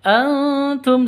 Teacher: nun mati bertemu dengan ta samar didengungkan samar disertai dengung dua ketuk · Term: ikhfa Hakiki